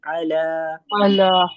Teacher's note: बारकता इब्राहिम देखिए बहुत ज्यादा हलक पर जोर नहीं देना है। बस हलक के दरमियानी हिस्से से हमें ऐन अदा करना है।